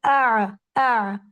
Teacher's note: अगर मैं कह रही हूं आ तो मैं अपने हलक के दरमियानी हिस्से को इस्तेमाल कर रही हूं।